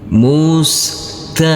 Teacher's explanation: karena kita berhenti di sini kita wakaf di sini maka huruf nun huruf yang terakhir ini dibaca sukun mati